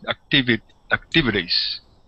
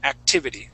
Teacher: that second T will sound like a d